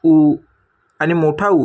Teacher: उ आणि मोठा उ या स्वरांचा उच्चार ओठामधून म्हणजेच ओष्ट उच्चार स्थानातून होतो ओठामधून निघणाऱ्या स्वरांना आपण ओष्ट म्हणतो त्यासोबतच मित्रांनो इतर पर्याय वेगवेगळ्या